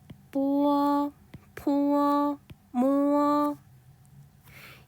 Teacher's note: 이 친구들은 위아래 입술을 붙였다 떼면서 발음합니다. 위아래 입술이 붙였다가 떨어지면서 뽀어, 포어, 모어.